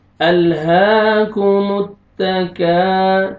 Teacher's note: الف مد ہے، الف سے پہلے فتحہ، کاف کو آپ نے کھینچنا ہے